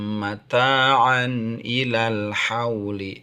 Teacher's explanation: tanwin itu sama dengan nun sukun bertemu dengan Hamzah dibacanya izhar